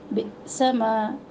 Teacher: با کے نیچے زیر ہے، بی کی آواز ہو، حمزہ کے اوپر جھٹکا